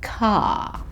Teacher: in Australia, we don't tend to make a strong R sound at the end of words. So this just becomes car.